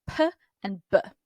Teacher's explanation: Place of articulation, bilabial, again, going back to, I think, Latin. Bilabial, bi means two, labial means lips. So there's two lips involved in this